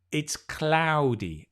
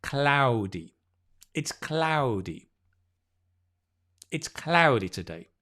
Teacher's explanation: You try and get the ow instead of ah. It's not a single vowel. It's a diphthong. So it slides. It's ow, ow, ow.